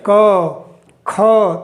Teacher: तो आपको पता चलेगा य कहां से आवाज आ रही है तो ये जो है कंठ से आवाज आती है इससे कंठ कहते हैं ठीक ये कंठ व्यंजन हो गया ऐसे